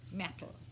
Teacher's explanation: o L final nunca se transforma em U, como em português. Né? Então, ele vai ser bem articulado e o L e a língua vai para o céu da boca, que fica bem atrás dos dentes.